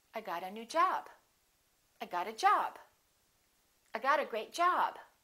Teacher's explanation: Got is a verb, job is a noun. They're both content words, but job gets more stress because it's a second word.